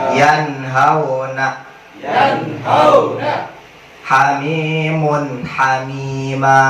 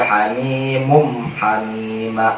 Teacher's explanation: Jadi jangan dibaca hamimum hamima atau hamimun hamima atau hamimung hamima. Harus jelas tanwinnya n, jelas n, tok n. La budda illa nun, la budda illa tanwin.